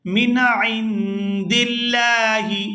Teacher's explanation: یہاں لفظ اللہ کے لام کو باریک ادا کیا جائے گا کیونکہ لفظ اللہ کے لام سے پہلے زیر ہے